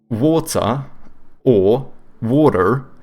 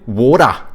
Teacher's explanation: they don't pronounce R's, they also say a schwa like the Brits.